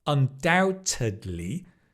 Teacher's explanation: Notice doubt you don't pronounce the b undoubtedly